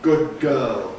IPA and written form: ˌgʊd̚ ˈgɜːl (good girl)